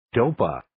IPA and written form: 'doʊpə (Dopa)